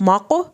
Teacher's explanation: क़ाफ पे आपने कलकला करना है